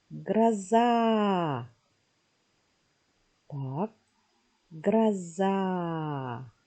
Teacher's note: Ударение падает на второй слог. Значит, первую гласную «а» пропускаем.